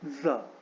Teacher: So when you, आप जब अपने जीभ को अपने माउथ के रूफ में सटाओगे, जीभ के टिप को माउथ के रूफ में सटाओगे, तो इस तरह की आवाज आएगी